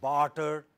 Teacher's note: you have words like barter where ra is deleted before ta,